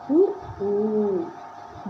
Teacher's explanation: வாய் திறக்கும் முயற்சியோட இதல்களை குவிக்கும் அதாவது வாய்ப்புக்கும் முயற்சியோடு இதிர்களை குவிக்கிறதுனால பிறக்குது.